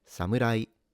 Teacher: Also note that it's a m rather than moo. And the R is a sound in between the L and the R in English. Kind of similar to the flapping you do when you pronounce the T in the American way, such as beauty.